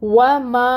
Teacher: الف سے پہلے میم کے اوپر فتحہ یعنی زبر کی حرکت ہے، الف مد کا رول ہو رہا ہے، ماں کو 2 حرکت لمبا کھینچیں گے